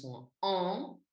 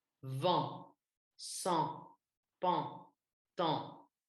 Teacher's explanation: vous faites un A et ensuite, vous passez l'air par le nez. Il ne faut pas que ce soit trop nasal non plus. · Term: A nasal